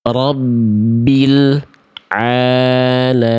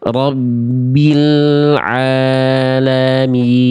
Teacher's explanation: Lam punya sifat namanya tawassut. Jadi dia L-nya harus sedikit mengalir. Rabbil bukan jadi bil nggak jadi gitu.